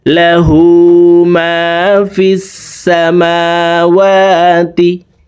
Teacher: ওয়ালা নাওম লা তাখুযুহু সিনাতুন ওয়ালা নাওম লাহু মা ফিস সামাওয়াতি। লাহু, হার উপরে উল্টা পেশ আছে, তাই ঠোঁট গোল করে 1 আলিফ টেনে পড়ব।